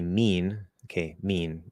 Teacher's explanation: There's a little bit of nasalization, nowhere near what you should be using if you're a Portuguese speaker, French speaker